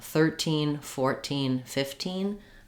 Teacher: if i'm saying uh 13 14 15 i'm stressing more on the first syllable · If I'm saying a 13-year-old, you can hear I'm stressing on teen. If I'm saying 13, 14, 15, I'm stressing more on the first syllable thir to make a contrast between 13 and 14.